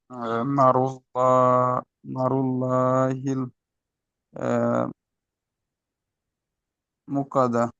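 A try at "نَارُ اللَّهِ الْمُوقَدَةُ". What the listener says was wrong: দেখেন, সব ঠিক আছে, দু জায়গায় আপনার টান ছেড়ে গিয়েছে। নুন আলিফ জাবার না, আলিফ মাদ্দা, আলিফের ডান দিকে জাবার আলিফ মাদ্দা, আর এখানে মিম ও পেশ, মু ও মাদ্দা, ও সাকিন ডান দিকে পেশ। এই পুরো আয়াতের মধ্যে মোট দুটো একদম ছোট্ট ছোট্ট ভুল, তাহলে এগুলো আমরা সেরে নেবো ইনশাল্লাহ।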